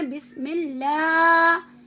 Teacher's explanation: لام کے اوپر کھڑا زبر ہے، کھینچ کر چلیں گے